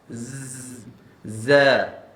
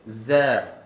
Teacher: Kalau Zai dia bunyi macam lebah tu, berdesiar dia macam bunyi lebah. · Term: safir